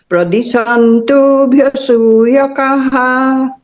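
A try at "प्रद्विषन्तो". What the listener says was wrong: हाँ, आप लोग सब लोग ना प्रद्विषंतो बोल रहे हैं। वो को यहाँ प्रोनाउंस करना है, प्रद्विषंतो, प्रद्विषंतो, प्रद्विषंतो, प्रदिशंतो नहीं। प्रद्विषंतो, जैसे ईश्वर नहीं बोलते हम, ईश्वर बोलते हैं। जैसे प्रद्विषंतो। हाँ हाँ, न है पर द्व होगा, द्वंद्व जैसे बोलते हैं ना, से द्वंद्व, द्वि, द्वेष, वैसे।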